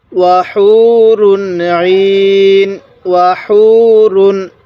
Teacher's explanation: আর এই তানবিনের পরে যদি ইজহারের হরফগুলো থাকে, ইজহারের 6টি হরফ হামজাহা, আইনহা, গইন, খ, এই 6টি হরফ থেকে কোনো একটি হরফ যদি এই তানবিনটির পরে থাকে, তাহলে অবশ্যই আমরা ওই তানবিনটিকে স্পষ্ট করে পড়ব। যেমন এই তানবিনের পরে আইনটি হলো ইজহারের হরফ, এজন্য আমরা এই তানবিনটিকে স্পষ্ট করে পড়ব